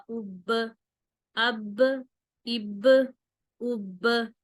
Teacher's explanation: میری ب کی آواز پلٹ کر آ رہی ہے، اسے قلقلہ کہتے ہیں۔ آگے ہے تا حروف قلقلہ میں سے نہیں ہے تو یہاں پر قلقلہ نہیں کریں گے، یہاں پر بہت آرام سے رکیں گے، آواز ڈبل پلٹ کر نہیں آنی چاہیے۔